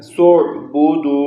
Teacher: واو مدہ ہے، 2 سیکنڈ تک آواز کو لمبا کریں گے